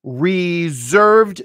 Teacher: two syllables stress on the second syllable reserved notice that's a z that s Bec comes a z